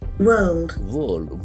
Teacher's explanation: We can see that the middle R is silent.